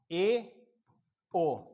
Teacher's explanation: लगभग मुख द्वार 50% खुला है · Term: अर्धसंवृत